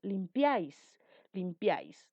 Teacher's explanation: la segunda sílaba en este caso está formada por una vocal cerrada una vocal abierta y una vocal cerrada y por ende termina en ese es una aguda por estar · Por ende, termina en S. Es una aguda por estar la mayor fuerza de voz en la última sílaba. La tildo en la vocal A. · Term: triptongo